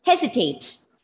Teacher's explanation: a commonly used word with the stress on the first syllable